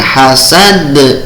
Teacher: mantul di akhir, berarti qalqalah kubro, qalqalah yang mantulnya dengan keras, dengan besar